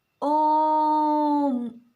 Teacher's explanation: ओम बोलने में 3 गुना समय लगा। पहले में 1 मात्रा का, दूसरे में 2 मात्रा का और तीसरे में 3 मात्रा का समय लगा। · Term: प्लुत स्वर